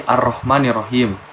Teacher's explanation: lamnya tidak dibaca atau seperti tidak ada karena dileburkan ke huruf ro. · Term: alif lam syamsiah